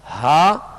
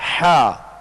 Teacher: ہا جو ہے وہ ابتدائی حلق سے اور حا جو ہے درمیانی حلق سے ادا ہوتا ہے. اور ان میں فرق جو ہے یہی ہے جو آپ آواز کو محسوس کر رہے ہیں، ہا اور حا، ہا حا، یہ فرق ہے ان کے اندر، اور یہ فرق کرنا ضروری ہے، ورنہ ہا حا بن گیا، حا ہا بن گیا تو یہ درست طریقہ نہیں ہے.